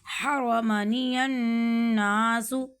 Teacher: نون مشدد ہے یہاں پہ غنہ کیا